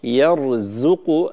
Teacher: الزاي حرف مرقق فلا نفخمه